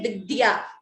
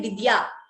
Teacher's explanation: So a second d is heard if you listen carefully. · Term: dvitvam